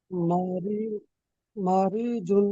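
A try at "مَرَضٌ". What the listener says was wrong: মারি নয়, রর উপরে জাবার আছে, ঠিক আছে, মার, মার।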